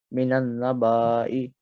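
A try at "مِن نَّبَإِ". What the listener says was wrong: It's not minan, it's min nabai. So ba, you're not going to prolong it because there's nothing here. Min nabai.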